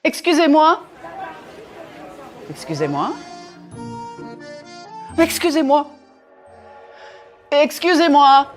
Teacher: Here's one thing to note with excusez-moi. Even though I varied the intonation to convey different meanings, I never punched the words too much. I didn't use a very wide range of pitch either.